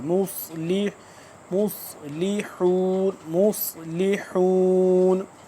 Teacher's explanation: स्वाद मोटा और सीन की आवाज से जरा सा जुदा करके